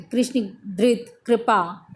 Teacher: इसका उच्चारण प्रायः उत्तर भारत में री की तरह होता है। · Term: र स्वर